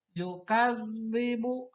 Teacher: Yukadzibu pada zal ada tasydid, di mana membacanya yaitu ketika kita membaca harkat fathah pada kaf, maka harus dimasukkan langsung ke zal yang bertasydid